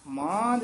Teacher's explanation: ਇੱਥੇ ਥੋੜਾ ਨਾਸਕੀ ਜਿਆਦਾ ਉਚਾਰਨ ਕਰਨਾ ਮਾਂਝ ਇੱਥੇ ਇਥੇ ਵੀ ਥੋੜਾ ਜਿਹਾ ਠਹਿਰਾ ਦੇ ਕੇ ਬੋਲਣਾ ਮਾਂਝ